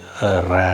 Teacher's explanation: நுனி நாக்குல மேல் அண்டத்தோட ஒட்டி நம்ம வந்து ர அப்படின்னு சொல்றோம்